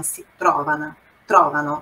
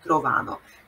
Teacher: O tro è a sillaba tonica. È a primeira sílaba, então é se trovano, trovano, não trovano.